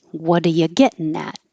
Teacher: Making the getting into gettin', making gettin' a syllabic N. And then even more changes, whatcha.